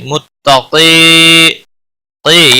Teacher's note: متقی قی یا مدہ ہے ایک الف کے برابر کھینچ کر پڑھیں گے · قاف حروف مستعلیہ میں سے پور پڑھا جائے گا